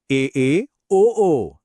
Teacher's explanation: महसूस कीजिए कि जबड़ा कैसे और ऊपर उठ रहा है और मुंह के अंदर की जगह और भी छोटी होती जा रही है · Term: अर्धसवृत्त